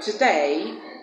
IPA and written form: tə'deɪ (Today)